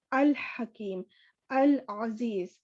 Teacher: لام جو ہے وہ مرج نہیں ہوگا، ادغام نہیں ہوگا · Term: لام قمری